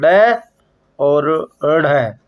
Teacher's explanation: फेंका हुआ। अर्थात वे वर्ण जिनके उच्चारण में जिह्वा ऐसा महसूस कराती है कि उन्हें फेंक रही हो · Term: उच्छिप्त व्यंजन